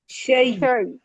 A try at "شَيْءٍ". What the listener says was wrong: آواز بند نہ کریں. شی یا مشددہ ہے. شی. وقف روم کر دیں.